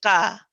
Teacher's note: Ka is ending with the ah sound, which is what you don't want. If you try to send your voice forward with keeping your mouth, keeping your face straight, ka, ka, you'll notice that the sound, the ending sound, is very different to the ka, which was incorrect, ka, which is correct.